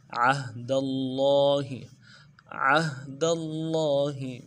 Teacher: اللہ کے لام کے اوپر کھڑا زبر ہے، تشدید بھی ہے، کھڑا زبر کو ایک نرم کھینچیں گے، تشدید کے اوپر زور دیں گے اور ہا کو نرمی سے پڑھیں گے